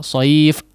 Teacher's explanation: tidak boleh terlalu panjang, tidak boleh terlalu sekejap juga dimatikan dengan menutup kedua pita suara.